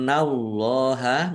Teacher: nun tasdid dibaca ghunah atau mendengung ditahan biar tampak dengungannya Allahnya dibaca tebal karena harakat di depannya fathah lam fathah berdiri mad thobi I panjang dua harakat.